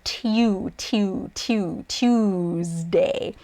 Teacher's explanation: it's actually tuesday there's like a little y in there